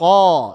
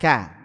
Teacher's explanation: qaf dia pangkal lidahnya terangkat. Sedangkan kaf tidak. Sedangkan kaf tidak terangkat, ka.